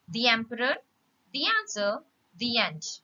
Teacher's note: you need to add little y sound